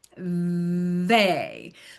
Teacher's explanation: where is the vibration happening? Okay, it's kind of between my teeth and my tongue